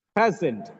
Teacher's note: Present, the first syllable is stressed.